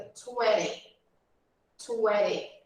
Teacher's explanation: Essa pronúncia que eu estou fazendo é americana. Então, no inglês americano, a gente costuma pular a letra T e muitas vezes usar o som de R no lugar da letrinha T, quando nós falamos.